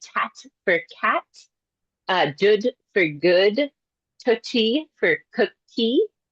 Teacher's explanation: So, it's coming front in the mouth. We're moving from back of the mouth to the front to produce something simpler. · we have a palatal or a velar consonant usually, right? And then they get fronted to an alveolar um consonant. So, it's coming front in the mouth. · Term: fronting